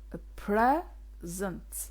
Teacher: so i stress the first syllable